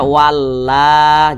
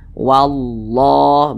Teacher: menebalkan lafaz Allah makanya ini lafaz Allah kita baca tebal